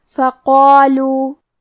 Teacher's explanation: کلمت فقالو میں قاف ہے اور اس کے بعد مد الف ہے، مد الف اپنے پیچھے والے حرف کا حکم لیتا ہے تفخیم میں اور ترقیق میں، لہذا ہمیں قاف کو اور مد الف کو دونوں کو بھاری آواز میں پڑھنا ہے